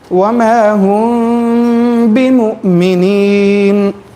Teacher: اخفاء شفوی یہاں پر جو ہے میم کو جی تھوڑا سا چھپا کر پھر اس کے بعد باقی ادائیگی ہونی چاہیے